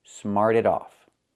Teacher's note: So smart in the present, in the past, smarted. We hear that T pronounced a fast D. · We hear that T pronounced as a fast D.